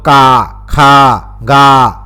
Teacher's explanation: क ख और ग को का खा और ग उच्चारण करना यह क्षेत्री बोलियों का परिणाम है